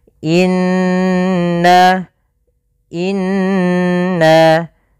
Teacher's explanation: kita menahan suara kalau di sini Nun berarti kita tahan nnya sepanjang dua harakat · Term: bacaan gunah